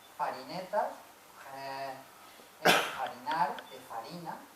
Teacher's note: Otra característica del aragonés, igual que en catalán y el gallego también, la conservación de la F latina. En palabras que en castellano se han perdido.